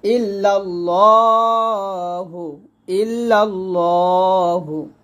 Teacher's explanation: এখানে লা না বলে ল বলতে হবে মোটা করে